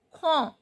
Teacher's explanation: d is not pronounced